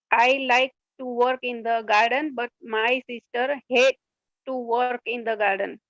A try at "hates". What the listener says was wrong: आपने अभी भी hate सुनाई दिया मुझे. Hates. आप जोर दे रहे हो इसलिए गलत आ रहा है pronunciation. So read it slowly.